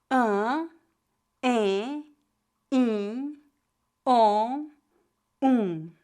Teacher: vogais nasais são pronunciadas com o ar passando pela boca e pelo nariz ao mesmo tempo